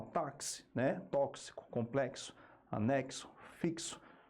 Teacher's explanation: É uma letra que representa dois fonemas. É o X representando o fonema KS. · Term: dífono